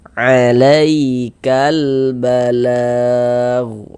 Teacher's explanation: huruf ya sukunnya adalah huruf lin. Maka kita baca luna, lembut.